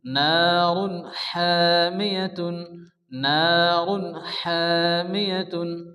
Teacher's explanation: এখানে কিন্তু তানবিন আসছে, আর তানবিনের পরে হরফে হালকি 6টি অক্ষরের মধ্যে হা আসছে, তাহলে এখানে কিন্তু কোনো গুণনা হবে না, বিনা গুণে জাহিরকে তাড়াতাড়ি পড়তে হবে।